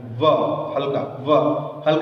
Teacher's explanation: व का व ओष्ठ, व का ओष्ठ, लेकिन व बोलते वक्त जिह्वा दांत में टकरा रही है। व हल्का, व हल्का स्पर्श दांत में भी, इसीलिए व का उच्चारण स्थान दांत और ओष्ठ, दंतोष्ठ दोनों में।